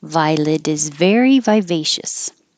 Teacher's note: the T changes to a D because it's between two voiced sounds.